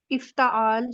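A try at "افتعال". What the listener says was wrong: इफ्तिआल होता है, त नहीं होता, इफ्तिआल।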